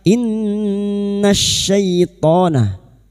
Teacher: masuk pada idgham syamsiyah lam takrif yang bertemu syin atau alif lam yang bertemu syin